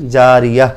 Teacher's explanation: গোলতায় থামিলে হা হয়ে যায়